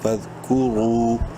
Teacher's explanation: رو کو منہ بھر کے پڑھنا ہے پیش کی وجہ سے، اور ایک الف کے برابر لمبا کرنا ہے واو مدہ کی وجہ سے